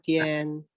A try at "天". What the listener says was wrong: Terus 天 dia T, jadi bacanya TH. Belum, nadanya nada 1, Pak.